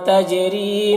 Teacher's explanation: ری میں را کو باریک پڑھیں گے اور یہاں پر یا مدہ ہے، ایک الف کو برابر کھینچیں گے